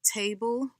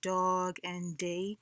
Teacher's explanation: you have words like table, which is the voiceless t sound, and then you have d, which is the voice sound for dog and day. · Alveolar has to do with the tip of the tongue coming in contact with the upper teeth, behind the upper teeth